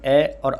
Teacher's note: उच्चारण स्थान अ और आ का कंठ है। इनको कंठे कहा जाता है।